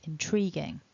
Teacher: first thing to notice then is the division of the word we've got three syllables and the second syllable gets the main stress so to begin with we've got a nice straightforward in then